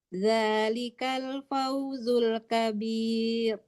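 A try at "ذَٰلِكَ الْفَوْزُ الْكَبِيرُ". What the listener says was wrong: Masih tebal ya. Dilatih-latih aja ya, dilatih-latih aja, masih tebal gitu. Usahakan tipis, tipis itunya.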